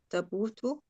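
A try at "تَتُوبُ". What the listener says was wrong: Tatubu. That's 2 tas now.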